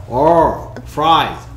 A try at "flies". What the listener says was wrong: 계속해서 을 소리만 내고 있어.